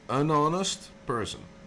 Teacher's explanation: Honest starts with an H. You write it with an H, but you don't say the H. It is silent.